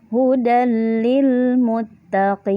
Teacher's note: jadi tanwinnya langsung melebur ke huruf lamnya. Tanwin tidak dibaca, sama seperti idgham bi gunnah. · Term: idgham bila gunnah